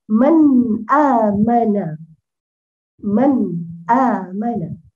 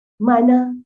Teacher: Dibaca dia dengan izhar. Dibaca dia dengan nun itu mati sendiri.